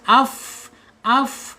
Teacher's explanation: hames napasnya atau udaranya keluar ya. Karakternya hames ya, tidak boleh tidak harus hames.